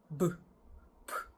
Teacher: both sounds are produced with the two lips coming together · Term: bilabial plosives